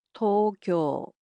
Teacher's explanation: it's similar to English, except the O sounds in it are a bit longer